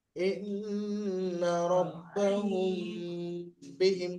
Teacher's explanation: শাফাফি কি কায়দা ইখফা কি বললাম ইখফা শাফাফি মিম সাকিনের পরে মিম সাকিনের পরে বা এসছে মিমকে এক আলিফ পরিমাণ গুণনা করে পড়তে হবে ইন্না রাব্বাহুম বিহিম এটা ইকফায়ে স্বাভাবিক একালে পরিমাণ গুণনা করে পড়তে